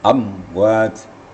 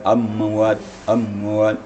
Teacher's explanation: Itu kan namanya mim mati bertemu waw, amwat, namanya izhar syafawi, amwat. Jadi mim mati itu tidak boleh ada getaran apabila dimatikan. Amwat, jangan sampai ada emberan amwat, amwat.